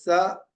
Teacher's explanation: लेकर आइए तो स इसको दंत सकार बोलते इसको दंत सकार दांतों के पास ले आने पर उत्पन्न होने वाला सकार